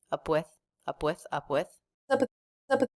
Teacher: really quick release of the P before the W